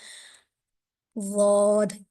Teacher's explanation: زبان کو آپ نے بائیں طرف جو ہے سب سے سیکنڈ لاسٹ داڑ پہ لے کر جانا ہے، اور ضاد ادا ہوگا۔ تو اس میں یہ احتیاط یہ ہے کہ آپ نے اپنے ہونٹوں کو گول نہیں کرنا۔